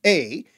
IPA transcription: e: